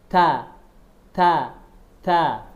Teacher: ujung lidah berada di gigi seri ee gigi seri atas bagian dalam. Gigi seri atas ini gigi seri atas bagian dalamnya. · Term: huruf ta